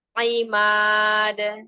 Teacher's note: Arah suaranya ke bawah, Bun. Lurus, tidak ke atas.